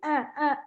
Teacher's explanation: आवाज हल्की सी अ अ इतना रहेगा क्योंकि होठ ज्यादा नहीं खुलेंगे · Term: जबर